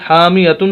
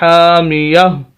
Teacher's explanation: تا کو ہا سے بدلیں گے اور اس ہا کو پھر ہم ساکن کر دیں گے